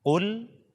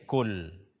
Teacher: kesalahan pertama mengganti huruf qaf dengan kaf